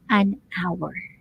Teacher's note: It is spelled with an H. Pero yung pronunciation niya is actually silent H.